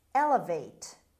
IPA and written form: ˈelɪveɪt (elevate)